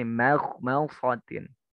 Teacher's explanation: mimnya tipis, baru kho-nya agak tebal